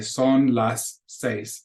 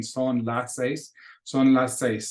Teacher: there's two s's in there but you really only hear one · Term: linking